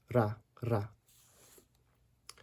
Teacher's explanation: sometimes at the beginning of a word, in order to help distinguish it from da, you'll hear people roll it a little bit